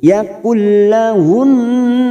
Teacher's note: nun yang bertasdid gunnah musaddada, dengung dan ditahan selama 3 harokat